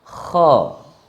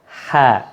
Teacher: Maka membaca huruf isti'la ini suaranya tebal.